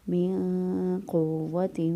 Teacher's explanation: واو کے پر جو ہے وہ شد ہے، مضبوط قوت کے ساتھ پڑھیں گے